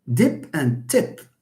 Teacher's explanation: The difference between the two words actually is only voicing. So here, voicing is a feature that is responsible for the the change of meaning.